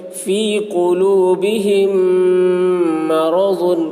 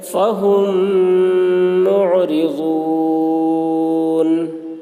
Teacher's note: میم ساکن کے بعد میم آ رہا ہے اس لیے میم کو میم سے ملا کر غنہ کے ساتھ پڑھیں گے، اس کو ادغام شفوی کہتے ہیں۔